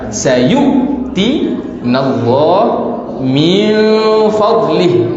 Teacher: Nun mati bertemu dengan fa, itu adalah ikhfa